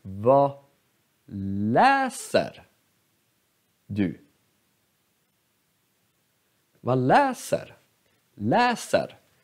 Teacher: Här, läser. har akut accent. Läser. Så det är bara det här ordet som är betonat.